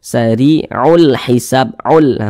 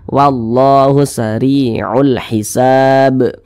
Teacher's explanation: lam qamariah itu biasa disebut juga dengan izhar qamariah karena dia cara membaca huruf lamnya itu dia dibaca jelas dibaca izhar jadi dia terbaca dengan jelas